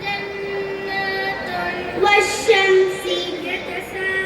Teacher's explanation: எங்களின் பிறப்பிடம் நாவின் நடுப்பகுதி வாயின் மேல் பகுதியை நோக்கி உயரும் போது ஜீம் ஷீன் யா உருவாகிறோம்.